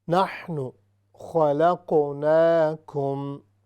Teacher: قاف چونکہ ساکن ہے اور یہ حروف قلقلہ قطب و جد میں سے ہے، اس لیے یہاں پر قلقلہ ہوگا